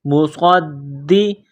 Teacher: صاد میں سیٹی کی آواز پیدا کرنی ہے، صاد کو موٹا کرنا ہے ، صاد کو دال کے ساتھ ملائیں گے، دال کو دبانا